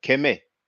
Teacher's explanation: kemet if i'm not mistaken is pronounced keme the t uh is dropped